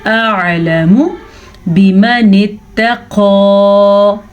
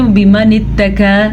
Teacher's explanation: میں نے قاف کو موٹا کر کے پڑھا ہے کیونکہ قاف حروف مستعلیہ میں سے ہے۔ حروف مستعلیہ وہ حروف ہیں کہ ہمیشہ پر پڑھے جاتے ہیں کسی بھی حالت میں، زبر ہو، زیر ہو، پیش ہو، ساکن، مد، دو زبر، تنوین، کچھ بھی ہو۔ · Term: موٹا قاف